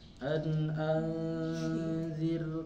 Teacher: karena ra sukun sebelumnya berharokat kasroh, jadi bacanya tarki. Kalau ditafkhimkan susah, anzir gitu Bu ya, tidak pas.